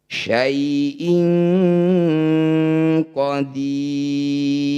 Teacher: Maqtabi bertemu huruf hidup kemudian dihentikan disebut bacaan mad arif disukun. Cara bacanya dipanjangkan 6 harokat, huruf terakhir sukunkan.